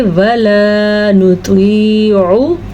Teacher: یہ الف مدہ ہے، اگر کوئی اس کو ولا پڑھے گا تو وہ الف مدہ ہی نہیں پڑھے گا